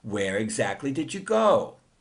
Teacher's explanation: Uses rising, falling intonation because the speaker is just asking for more information.